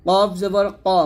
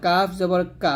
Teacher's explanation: কফ জবর ক মোটা, আর কাফ জবর কা পাতলা